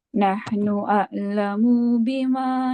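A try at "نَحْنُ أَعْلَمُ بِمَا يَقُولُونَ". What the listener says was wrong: Munya jangan panjang, munya jangan panjang.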